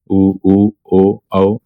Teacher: उच्चारण में होंठ गोलाकार होते हैं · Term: व्रतमुखी